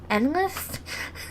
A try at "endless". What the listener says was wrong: Endless. That can be if you put it there. That'll be endless.